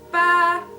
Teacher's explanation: it'll go straight up, a steady rising tone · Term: second tone